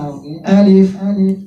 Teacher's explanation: یہ جو تالو کے ساتھ اوپر کا اندر کا خالی حصہ ہے وہاں سے الف ادا ہو گی